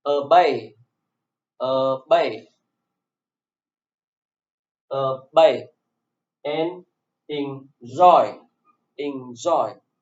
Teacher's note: The stress is on the second syllable. The stress is on the second syllable.